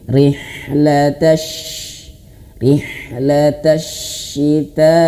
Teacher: Huruf shin dia memiliki sifat hamas. Hamas itu dia mengalir nafas.